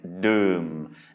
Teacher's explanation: this is a low tone because it's a mid-class consonant with Myek.